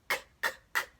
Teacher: So you can call that the coughing sound, like k, k, k, something's hung in my throat. Or you can also just say it's a back sound because it is made in the back of the throat. And you can put your hand on your throat to show this is where the sound will be coming from.